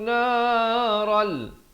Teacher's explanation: Ral terus masuk di sini tanpa dengung, idgham bila gunnah. Asalnya naran jadi naral.